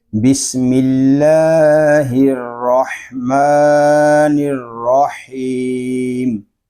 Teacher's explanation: را میں واو کی مشابت پیدا نہیں ہونی چاہیے